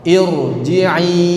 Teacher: Ro sukun sebelumnya hamzah wasal langsung tebal. Irji'i kan sebelumnya kasrah ya.